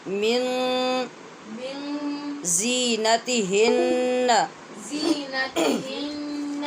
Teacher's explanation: یہاں جو من کا نون ہے اس پہ اخفا ہو رہا ہے غنے کے ساتھ